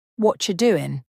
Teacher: The words what are combine to sound like whatcha. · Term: linked together